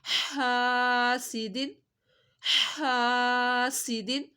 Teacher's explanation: ہاں کو حلق کے درمیان سے پڑھنا ہے